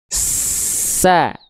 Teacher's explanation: kalau huruf sin, sa, dia ngalir nafasnya